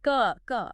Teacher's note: These are sounds you can feel coming from deeper in your throat. They have a heavier, almost guttural quality. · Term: tongue root sounds